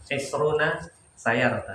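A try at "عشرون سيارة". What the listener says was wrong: Masya Allah. Barakallahu.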